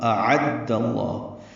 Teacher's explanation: اعد اللہ، دال کو لام اسم جلالہ سے ملائیں گے، دال کی زبر کی وجہ سے لام اسم جلالہ پر پڑھیں گے. اعد اللہ، لام کو 2 حرکات لمبا کرنا ہے اور ہاق سے حلق سے ادا کرنا ہے، لام باریک نہیں پڑھیں گے، پر پڑھیں گے دال کی زبر کی وجہ سے.